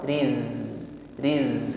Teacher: Ketika disukun maka sifat safir ini semakin kuat.